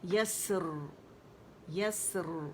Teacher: اور اس کو نا یسر کر کے نہیں پڑھیں گے, اسے مشدد نہیں بنائیں گے, جسٹ ون ساکن ہے, اس پہ ہمس واضح کریں گے اور را جو ہوگی وہ موٹی پڑھی جائے گی, مخفم پڑھی جائے گی.